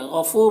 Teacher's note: غفور، غین کو پر پڑھیں گے، حروف مستعلیہ میں سے ہے، فو میں واو مدہ ہے، ایک الف کے برابر کھینچیں گے